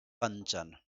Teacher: अब इस अनुस्वार का उच्चारण स्थान केवल और केवल नासिका।